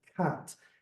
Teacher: You say k, you open your mouth, your tongue goes down, say ah, and then you close the tip of the tongue, make explosion on the alveolar ridge, and you have cat.